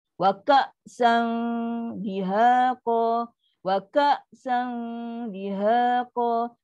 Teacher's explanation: Hamzah sukun, bunyi syiddah, putus bunyi.